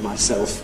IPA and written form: maɪˈseɫf (myself)